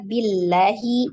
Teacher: ya jadi Alif lamnya tidak dibaca yang Alif yang lam pertama tidak dibaca langsung ditasdid ke dalam lam yang kedua